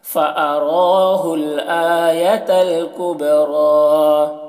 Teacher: با میں قلقلہ ہو رہا ہے، را کو کھینچ رہے ہیں کبریٰ اور موٹا بھی کر رہے ہیں، یا کو نہیں پڑھا جا رہا.